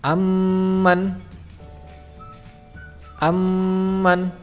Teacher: Dengan memasukkan bunyi mim sukun ke dalam bunyi mim yang hidup dengan ditahan 2 harokat. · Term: idgham mimi